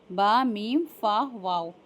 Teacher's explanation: ये हुर्फ़ शफ़विया हैं 4 जो होठों से अदा होते हैं,